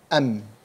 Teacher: We pronounce the letter mim from its articulation point, which is the two lips, am. We can't pronounce the mim from the throat, for example, as kha or ha.